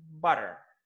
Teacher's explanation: When Americans say that, butter, so they change words T into D.